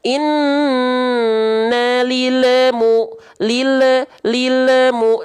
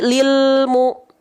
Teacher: Kenapa enggak boleh mantul karena lam bukan huruf Qalqalah